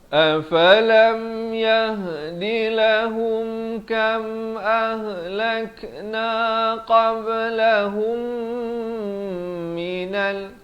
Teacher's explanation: Ahlakna ada lantunan di sini, qalqalah. Qablahum 2 harakat, idgham mislan saghir, mim mati bertemu mim.